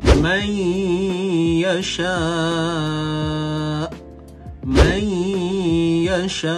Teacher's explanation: idgham bi gunnah masuk bukan sekadar masuk tetapi bi gunnah, iaitu bersama dengan dengung